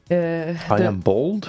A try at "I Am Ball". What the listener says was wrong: I Am Ball. It's like I Am Ball. I guess it's like a bouncy ball, right? Ball. Not a bowl that you eat from. Ball.